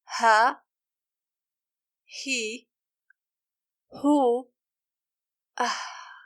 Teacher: The ha is pronounced by approaching the vocal cords to each other and letting the air rub through it.